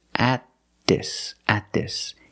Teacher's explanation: We don't say at. We don't release the T. Because the T is after a vowel, we do a stop T.